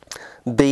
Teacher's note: B is a voiced bilabial stop